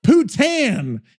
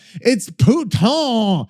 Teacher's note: Putain in French is pronounced roughly like pouton with the N nasalized. So it's more like puta.